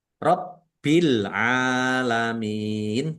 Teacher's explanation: Bnya dibaca dobel ada tasdidnya ditekan dan ditahan biar tampak dobel. Alalamin alif lam qamariah ditandai lamnya dibaca sukun.